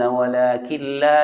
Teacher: نون پڑھنے میں نہیں آئے گا، نون لام میں داخل ہو گیا، اس کو کہتے ہیں ادغام ہو گیا، مدغم ہو گیا۔